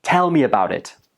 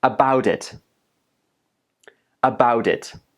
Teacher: the t sound in about actually becomes more like a d sound. Then that the sound links to the next word, which is it.